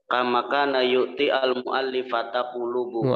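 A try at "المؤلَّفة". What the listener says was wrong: Mu'allafata bukan mu'allifata. Mu'allafata isi maf'ul.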